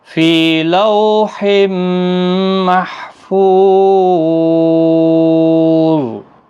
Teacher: محفو فو واو مدہ ہے اور ضا حروف مستعلیہ کا حرف ہے، اس پر قلقلہ نہیں ہوگا، صرف پر پڑھنا ہے